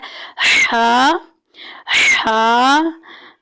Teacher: ये हा जो है ये pronounced from the middle part of the throat के जो है हमारे गले के दरमियानी हिस्से से अदा हो रहा है, वस्त हलक से ये अदा हो रहा है।